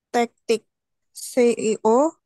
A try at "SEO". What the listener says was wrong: SEO, SEO bukan CEO, SEO.